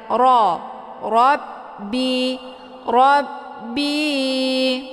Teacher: bacaan tebal karena rnya berharakat fathah jadi cara bacanya pangkal lidah ikut terangkat ke langit